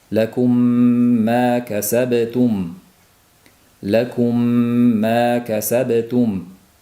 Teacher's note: bu birinchi mimni keyingi mimga idg'om qilib g'unnali degani mana shu ma'noda bir past ushlab turiladi. Lakum ma kasabtum lakumi ma kasabtum deyilmaydi. · Shu maʼnoda sukunli mim o'zidan keyin oʻziga o'xshash demak mim harfi kelganda bu birinchi sukunli mimni keyingi kelgan harakatli mimga kirg'izib demoq bilan o'qilinadi. Mana shunga idg'om misl deyiladi. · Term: idg'om mislayn